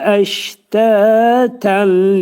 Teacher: Əştətəndə şin hərfinin məxrəcini ani tormuzlama veririk. Əştəni incə deyirik.